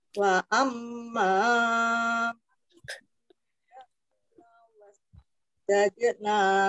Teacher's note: mimnya dibaca mendengung ditahan